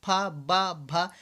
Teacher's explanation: दोनों ओठ जो होते हैं आपस में मिल जाते हैं